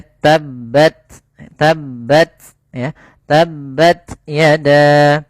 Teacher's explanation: Di sini ada huruf ta yang dia berharakat sukun. Maka ini harus kita baca dengan bacaan yang ia pada huruf ta itu ada sifat hamesnya.